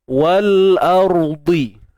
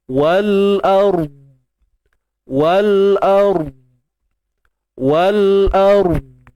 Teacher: Dan huruf dha ni jangan lantun. Dia tebal, sifat itbaq, sifat isti'la dia kekal. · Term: huruf dad